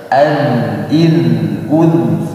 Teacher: Tahan dulu di dal. Dal ketika sukun jangan berdesis, ya. Tahan di ujung lidahnya, bergesekan dengan gigi seri atas.